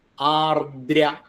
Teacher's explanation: ദകാരം മൃദുവാണ് ആർദ്ര ശക്തി വേണ്ട ആർദ്ര എന്നാ വരുത് ആർദ്ര അത്രയ ആവാൻ പാടുള്ളൂ ആർദ്ര താം ആർദ്രത അന്ത